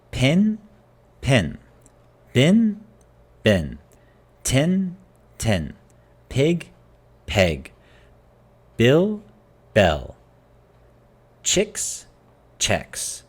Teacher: the vowel sounds have combined